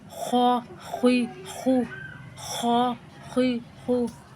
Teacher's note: یہ بھی حلق سے ہی ادا ہوتے ہیں، اور یہ پر حروف ہیں، ان کو موٹا کرنے کو پڑیں گے